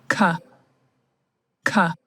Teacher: Plosive, because it blocks the airflow, and then, it releases it at once. · You will have the back part of your tongue touching, approaching your velum. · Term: velar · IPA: /k/